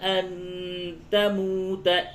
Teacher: نون ساکن کے بعد تا ہے، اس جگہ پہ اخفا ہوگا